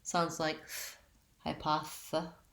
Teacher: our TH is a voiceless TH sound